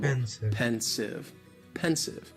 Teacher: just two syllables, and the stress is on that first syllable